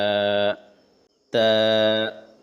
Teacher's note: زبان کی نوک کو اوپر کے دانتوں کے پیچھے ہلکی سی لگاتے ہوئے تا ادا ہوتے۔ زبان کی نوک کو اوپر کے، یعنی کہ جو اوپر والے دانت ہوتے ہیں اس کے پیچھے ہلکا سا لگائیں تو تا ادا ہو جاتا ہے، آسانی سے یہ ادا ہو جاتا ہے۔